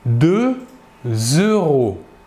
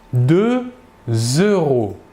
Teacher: nous faisons la liaison entre le X, dernière lettre du numéro 2, et le E de euro. La liaison d'un X avec le mot qui suit est le même son que la liaison que pour la lettre S.